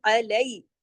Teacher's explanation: یہ یائی لین ہے، علی، اس کو علیہ نہیں پڑھیں گے، اردو کی طرح نہیں پڑھیں گے ، اور عین کو الف کی طرح نہیں پڑھیں گے، علیہ